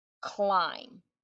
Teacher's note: the b is gonna be silent but the vowel will turn long